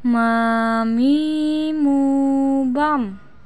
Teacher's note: huruf mim atau Ma dikeluarkan dengan cara merapatkan bibir kita